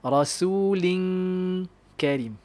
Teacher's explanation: kalau kaf ni dia punya gunnah dia tak tebal.